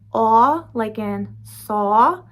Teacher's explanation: I did my best to do a good rounded aw sound for you